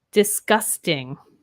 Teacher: the g in this does have almost a k sound and this is because k and g are the voiced and unvoiced pairs